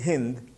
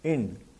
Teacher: The word Sindhu became Hind, and the word Hind turns into Ind because the aspirate Ha is missed and is made an inaspirate sound by the replacement of the H sound by the vowel sound. So, he becomes E, and therefore, the word Hind has become Ind.